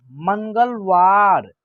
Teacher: उसके बाद मन, ग, ल, वार, मंगलवार, ठीक है ना। म के ऊपर इस बिंदी को जो है ना हम लोग न का उच्चारण करेंगे, आधा न का उच्चारण होगा